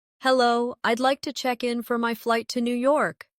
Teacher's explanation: Notice how check in sounds like one smooth unit. No pause in the middle.